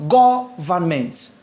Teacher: My stress is on the first syllable, which is go.